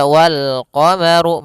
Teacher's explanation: Kemudian pada lafaz ru, ru-nya dibaca tebal karena dia huruf ra yang berharokat dhammah.